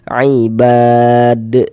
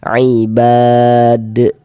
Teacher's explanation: Jadi kalau kita membaca Al-Quran, kemudian kita tuh berwakaf nih, berhenti kita tepat di huruf qalqalah, maka dia menjadi qalqalah kubra, menjadi qalqalah besar